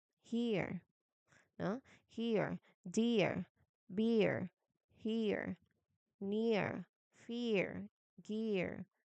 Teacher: You start with the E in ship, and then now keep the sound going, but slowly let your jaw drop just a tiny bit, and let your tongue melt back to the center of your mouth. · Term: sliding vowel